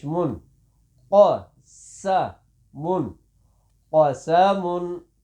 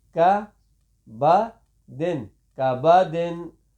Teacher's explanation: دو نقطے والے قاف کو موٹا پڑھیں گے اور اس کاف کو ہمیشہ باریک ہی پڑھیں گے